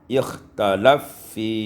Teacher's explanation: diidamkan Fa pada Fa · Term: idghamul Fa fil FA